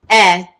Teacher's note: The open E or the lax E or the short E sound